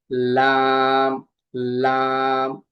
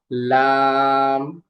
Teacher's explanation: জিহ্বার আগার কিনারা সামনের উপরে দাঁতের মাড়ির সঙ্গে লাগিয়ে উচ্চারিত হয় লাম, লাম। হ্যাঁ, আমার সাথে বলো লাম।